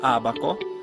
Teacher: it was a vowel formed all the way in the front of your mouth